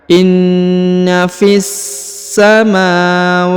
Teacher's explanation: huruf na ditahan dan ditekan ya, karena di sini terdapat tanda tasdid atau penekanan ya, maka dia ditahan dan ditekan.